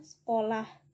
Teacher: penghilangan fonem E di tengah kata